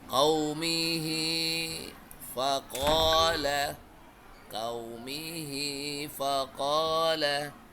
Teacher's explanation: Semua hak domir ini dipanjangkan atau dibaca panjang dua ketuk